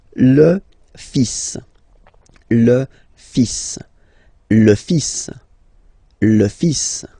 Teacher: even if you've got this L, well, basically you don't pronounce it, and then strangely you pronounce the final S.